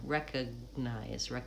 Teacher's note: I use a stop G there, so I'm not saying recognize. There's no space between the G and the N. I release the G into the N.